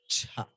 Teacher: For that cha, you add one small ha. It becomes cha. That is mahaprana.